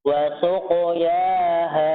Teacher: Ingat qafnya dialirkan, ya, jangan sampai ada jeda suara.